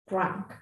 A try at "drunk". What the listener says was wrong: Drunk, exactly, good.